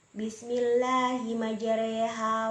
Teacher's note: muhana imalah imalah ialah memiringkan harakat fathah ke kasrah